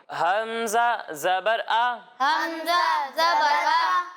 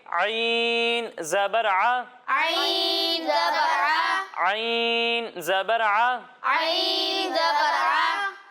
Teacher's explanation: एक हर्फ है हमजा और दूसरा हर्फ है आइन। जब हम हमजा की अदायगी करेंगे तो इसकी आवाज़ हलक के निचले हिस्से से आएगी और जब हम आइन की अदायगी करेंगे तो इसकी आवाज़ हलक के दरमियाने हिस्से से आएगी